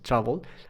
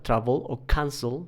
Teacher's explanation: el acento está al principio de la palabra travel